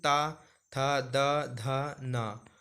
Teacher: तो आप पाएंगे कि आपकी जीभ दांतों पे लग रही है · ता वर्ग, अब देखिए ता वर्ग के जब जितने भी वर्ण हैं आप इनको बोलेंगे तो आपकी जीभ दांत में लगेगी, इसलिए ये सारे दंत वर्ग में आते हैं, दंत वर्ग। तो उच्चारण इन स्थान इनका दंत होता है, दांत होता है उच्चारण स्थान।